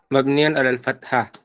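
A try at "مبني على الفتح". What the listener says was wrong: Bukan fathah bacanya apa? Mabniun ala sukun, dan juga kalau misalnya fathi bukan dibaca fathah, mabniun alal fathi.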